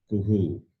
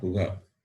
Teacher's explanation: Visarga takes the sound of the vowel U